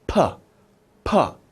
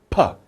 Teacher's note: there's no air going through your lips are closed tight